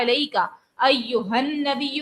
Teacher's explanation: علیکا ایہن نبی میں نون پہ تشدید ہے, اور جب نون مشدد ہو جائے تو اس کو جماؤ سے ادا کرتے ہیں. نون مشدد کو ہم غنہ کے ساتھ ادا کریں گے